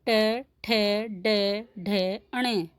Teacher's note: मूर्धा से उच्चारित वर्ण मूर्धन्य कहलाते हैं। इन वर्णों का उच्चारण करने में जो हमारी जीभ है वो मूर्धा का स्पर्श करती है